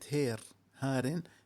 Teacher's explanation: عندنا قالون الراوي عن نافع بيقرأ كلمة هير، هار، بيقرأها هير بالإمالة، الإمالة الوحيدة عنده في القرآن الكريم